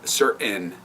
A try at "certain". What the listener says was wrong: There's a T in there.